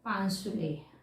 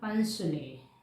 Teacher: ऐसे, यानी ये संयुक्त है, इस संयुक्त से पहले दीर्घ पा आ रहा है, अर्थात ह्रस्व संयोगी सूत्र का प्रयोग करके दीर्घ आ के स्थान पर ह्रस्व आ